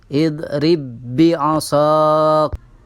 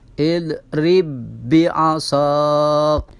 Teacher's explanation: Di situ huruf ba yang pertama berharokat sukun, kemudian huruf ba yang kedua berharokat kasrah. Maka ini cara membacanya dengan mentasydidkan atau memasukkan huruf ba yang sukun kepada huruf ba yang kasrah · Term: idgham mutamatsilain